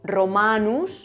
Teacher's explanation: la segunda sílaba termina en vocal larga, que es esa A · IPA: /ro.'ma :.nus/